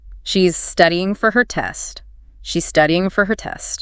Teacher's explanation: Feeling the stress on studying and test.